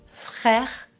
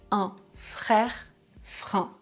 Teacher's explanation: je dois faire passer l'air par le nez pour prononcer la voyelle nasale